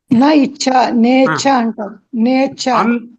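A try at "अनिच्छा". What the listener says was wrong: అనిచ్ఛ నేచ్ఛ కాదు నా ఇచ్ఛ సంధి అవుతే నేచ్ఛ అవుతుంది సమాసం చేస్తే అనిచ్ఛ అకారానికి ఇకారం కలిపి సమాసం సంధి చేస్తే అది వేరు.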